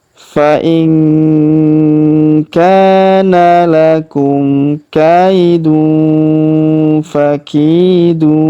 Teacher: tanwin un huruf dun bertemu fa, maka kita dengungkan dan kita samarkan cara bacanya